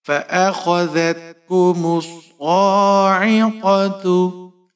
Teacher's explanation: میم کے اوپر پیش ہے، صاد مشدد ہے، میم کو صاد کے ساتھ ملائیں گے۔ صاد کے اوپر کھڑی زبر ہے، صاد کو آپ نے موٹا پڑھنا ہے، اور ایک الف کے برابر کھینچ کر پڑھیں گے۔ · قاف کے اوپر زبر ہے، موٹا پڑھیں گے، بغیر کھینچے پڑھنا ہے